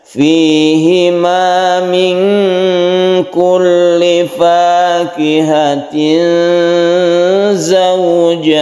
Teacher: Yang kita dengungkan ini ada ikhfa, nun bertemu dengan kaf, kita samarkan membacanya